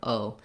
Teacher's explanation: Then letter O in American English, and in this word emoji, is a diphthong. We're gliding and holding that O for a long time.